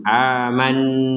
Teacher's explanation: Jadi di rongga hidung kita itu ada dengungan, terasa di rongga hidung kita itu mendengung.